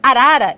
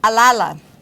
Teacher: sua fala é marcada pela troca dos sons de R. Então, ele troca por lá ou por ya.